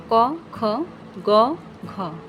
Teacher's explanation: পশ্চ জিহ্বা এবং পশ্চাৎতালুর সংস্পর্শে জিহ্বামূলীয় বা পশ্চাৎতালুর ধ্বনির সৃষ্টি হয়। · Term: জিহ্বামূলীয় ব্যঞ্জনধ্বনিগুলো